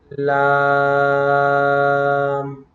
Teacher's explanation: یہ زبان کا کنارہ اور اوپر کے باہری دانتوں کے مسوڑوں سے ادا ہوتا ہے